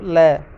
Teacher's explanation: जब जीभ जो है ऊपर की ओर तालु की ओर उठकर बीच का रास्ता बंद कर देती है और वायु जो है जीभ के दोनों किनारों से बाहर निकलती है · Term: पार्श्विक ध्वनियाँ